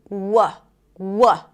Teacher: the consonant is really produced in the back of the mouth, right? As the back of the tongue goes up, but it's not blocking the air completely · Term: the W sound